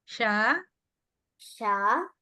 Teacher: Sha means your tongue must be touching the roof of the mouth.